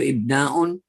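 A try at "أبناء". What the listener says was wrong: ibna is not. It's not ibna. It's abna. The word ibnun, the plural of ibnun is abna'un. It's not ibna'un. It's abna'un. That's the reason why.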